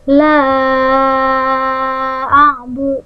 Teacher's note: Nah, ini namanya mad jaiz munfasil. Ini dibaca 2 alif atau 4 harokat.